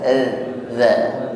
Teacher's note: Padahal za tidak berdesis. Ujung lidah bertemu ujung gigi sari atas.